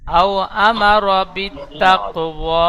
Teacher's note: কফটি কলকলা হবে কফের উপর সাকিন